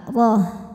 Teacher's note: huruf ra dibaca secara tafkhim karena berharokat fathah, maka bacanya tebal, roh. Dan tak marbutoh berhenti jadi ha sukun.